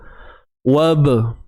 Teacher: sifatnya ialah qalqalah sughra, lantunan yang kecil, sederhana sahaja.